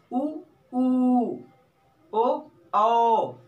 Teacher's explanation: जिह्वा के एकदम पिछले भाग से, पिछले छोर से ऊ, यही से निकलता है वो ऊ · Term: पश्च भाग